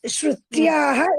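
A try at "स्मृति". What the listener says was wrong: శృతి చెప్తున్నా, నేను స్మృతి అన్న. స్మృతి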